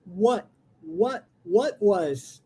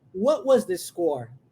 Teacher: Olha o T sendo engolido, viu?